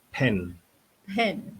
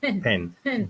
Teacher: Dia ada angin sikit keluar. Ada angin.